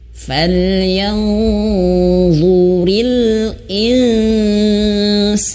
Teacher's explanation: Kalau nun mati bertemu sin dia tipis dengungnya.